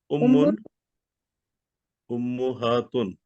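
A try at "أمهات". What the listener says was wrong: अब उम्मुन से उम्मू नहीं बनाना आपने, आपने उम्माहात बनाना है, ठीक है।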